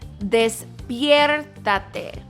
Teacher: That R should roll just a little bit.